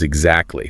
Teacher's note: A classic example is the middle T in the word exactly, which often disappears entirely. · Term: elisions